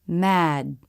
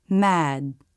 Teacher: we stop the air but we don't release it you lift your tongue into position stop the air and that's it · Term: stop d